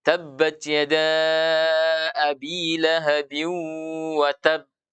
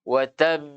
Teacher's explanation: Maka ba ketika sukun maka harus diberikan pantulan. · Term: qalqalah